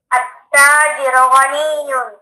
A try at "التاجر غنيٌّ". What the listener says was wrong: Again, أعد. only hear the dhamma.